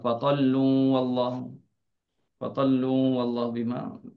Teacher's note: Tak dibaca dengan tebal kerana lam itu baris depan.